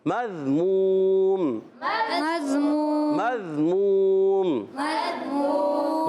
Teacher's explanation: مضموم میں میم کو ذال سے ملانا، ذال کی ادائیگی کلیئر کرنی ہے۔ بعض بچے مضموم پڑھتے ہیں، مز نہیں، مضموم، مضموم، مضموم، مضموم، گڈ۔